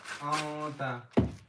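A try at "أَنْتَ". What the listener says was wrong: Longer. Anta. Why is it ikhfa? Anta.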